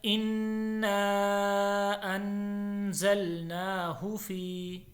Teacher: ان کے اوپر غنہ ہے، نا کے اوپر مد ہے، ان کو ایک الف کے برابر، نا کو 1 سے 3 الف کے برابر لمبا کرنا ہے